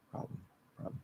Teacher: it kind of seems like the l isn't pronounced and the b and the m kind of merge into one nasal sound